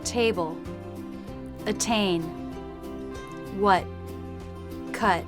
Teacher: Table, attain, what, cut. However, in American English, they tend to drop the T in the final position